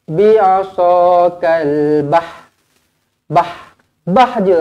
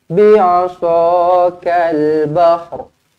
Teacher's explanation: kita matikan ha terlebih dahulu, baru kita datangkan ra sedikit di hujungnya.